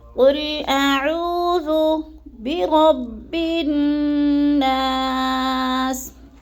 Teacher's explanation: حمزہ کو اور عین کا دونوں کا الگ الگ مخرج ہے۔ عین کو حلق کے درمیانے حصے سے ہم نے ادا کرنا ہے، اور عو کو تھوڑا سا لمبا کرنا ہے، اس لیے کہ ادھر وہ مد آ رہا ہے